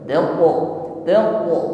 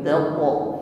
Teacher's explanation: Qaf pantulkan ada qalqalah di situ. Pantulannya atau bunyi qalqalahnya tebal.